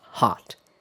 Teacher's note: in most varieties of American English, the vowel is more open.